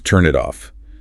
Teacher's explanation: The N from turn jumps to it and the T from it jumps to off. It becomes one smooth word. Which means if a learner is trying to annunciate turn then pause and then pause off separately, they are actively inserting three little pauses and just destroying the rhythm.